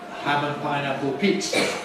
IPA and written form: ˌhæm ən ˌpaɪnæpl̩ ˈpiːtsə (ham and pineapple pizza)